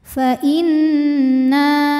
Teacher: karena ada Alif didahului fathah maka Nun panjang dua harakat · ada hukum ghunah musyaddadah karena nunnya bertasdid cara bacanya didengungkan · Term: Mad thobii, gunnah musyaddadah